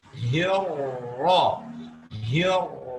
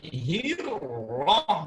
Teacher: Karena huruf yang berharakat di sini adalah harakat fathah, maka ra-nya harus langsung dibaca dengan tafkhim saat membaca kasrahnya hi.